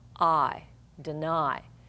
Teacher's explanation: So we know that's an accented syllable, and notice I'm saying I, deny. In a final position, accented position, we have a long I sound